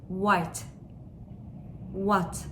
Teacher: V'yi mesela vasıta, vesikalık, vazo şeklinde söylerken W'da dudaklarımızı daha öne getirip birleştiriyoruz